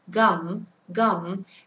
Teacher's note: Không phải là chữ k đâu. Chỉ đọc là g, không bật hơi nhá. Gum, gum.